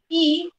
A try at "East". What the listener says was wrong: East. So don't pronounce it whenever you read. Don't pronounce it as just E. East.